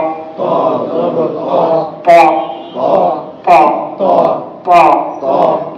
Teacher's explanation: লক্ষ্য করেন, ত জবর ত, ত ত ত। জিব্বার আগা সামনের উপরে দুই দাঁতের গোড়ার সাথে লাগাবো, আর জিব্বার মাঝখানটা একটু উপরের দিকে ঠেলে ধরবো।